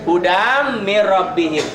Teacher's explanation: Jadi kalau dihentikan huda mad iwad. Karena disambung huda ini hudan mirrobbihim, ini dalam hukum idgham jadi hudam mirrobbihim. Tanwin ketemu mim. Tulisannya gini, bacaannya ini hudam mirrobbihim.